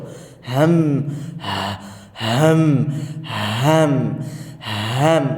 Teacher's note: আল হালক বা হালক, এভাবে বলা হয়। হ্যাঁ, কণ্ঠনালীর ভেতর থেকে উচ্চারিত হরফ হামজা, হা, গলার নিচের অংশ